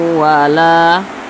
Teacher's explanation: Didengungkan. Nah, suaranya itu kita tahan, kita panjangkan 2 harokat atau kira-kira 2 ketukan.